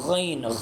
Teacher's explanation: غین یہ خا کی طرح ہے، گلے کے شروع والے حصے سے غین ادا ہوتا ہے